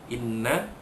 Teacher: Nun tasydid wajibul ghunnah didengungkan